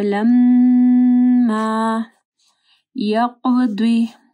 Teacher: قاف کو موٹا پڑھنا ہے، ضاد کو بھی موٹا پڑھنا ہے.